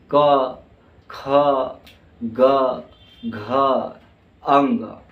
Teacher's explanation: जब इन वर्णों का हम उच्चारण करते हैं बोलते हैं तो हमारा जो है कहां से आवाज निकलती है तो कंठ से निकलती है